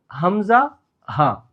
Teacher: തൊണ്ടയുടെ അടിയിൽ നിന്ന് വരുന്നത്